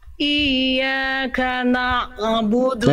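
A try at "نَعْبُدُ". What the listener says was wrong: Nah, jangan itu Bunda terputus plus memantul na'budu. Na'budu. Jangan terputus. Terus ngalir. Na'budu. Bukan na'budu. Na'budu. Enggak na'budu. Nah, itu kan terputus. Jangan dihentak, dialirkan, dilemesin, ditekan tapi lemes. Na'budu dari tengah tenggorokan. Na'budu.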